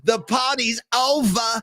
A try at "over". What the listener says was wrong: There's no R here. Give it to me.